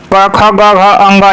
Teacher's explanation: क ख ग घ अंग ये कंठ होते हैं